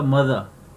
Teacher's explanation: आर को pronounce नहीं करना. As I told you in consonant sounds that ending आर is always silent